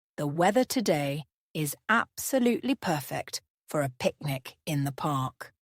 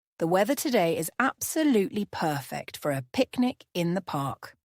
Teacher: Notice how we emphasize the word absolutely in the sentence.